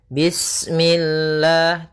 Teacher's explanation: lafal Allah ketika sebelumnya kasrah maka dia dibaca dengan tipis ya dengan l bismillah tidak bismillah ya kita ulangi danah di